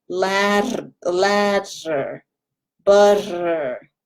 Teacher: But the key is light and feathery tongue that flaps.